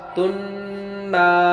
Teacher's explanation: دو پیش کی تن بعد نون آیا ادغام بالغنہ ہوا اور نا میں الف مدہ ہوا ایک الف کے برابر کھینچ